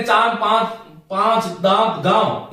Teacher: अनुनासिक का जो विधिवत उच्चारण है वोह मुख और नासिका दोनों है यह ध्यान रखिएगा अनुस्वार केवल नासिका है अनुनासिक मुख और नासिका